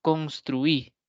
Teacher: ejemplo construi ese trui irá en una misma sílaba sí trui la u y la i van a ir junta siempre dentro de una misma sílaba